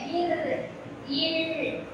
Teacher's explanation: இர் இல் ஆகிய இரு மெய்களும் மேல்வாயை நாக்கின் நுனி வருடுவதால் கிடைக்கின்றன. இர் இல் இந்த நாக்கோட நுனி என்ன பண்ணுது, மேல போய் தொடுது.